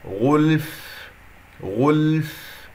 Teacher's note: اللام يجري فيها الصوت فترة زمنية بسيطة من أحرف التوسط لين عمر، الفاء رخوة يجري فيها الصوت والنفس، والفاء مخرجها ضعيف تحتاج إلى هواء حتى أسمع صوت الفاء.